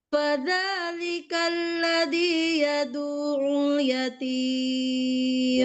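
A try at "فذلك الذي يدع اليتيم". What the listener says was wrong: Sudah bagus yatimnya iramanya, tapi ain tasydidnya kurang tekan.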